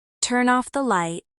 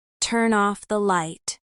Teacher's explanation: For example, in the phrase turn off, the N sound of turn connects directly to the O of off. So it sounds like turn off. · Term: linking